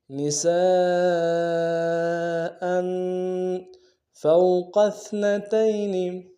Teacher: بغیر کھینچے پڑیں گے، قوف کو سا کے ساتھ ملانا ہے، قوف کو موٹا ادا کریں گے، سا کو باریک ادا کریں گے